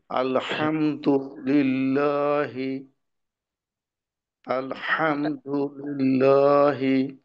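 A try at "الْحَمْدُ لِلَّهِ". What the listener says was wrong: আইনে আরেকটু চাপ দিতে হবে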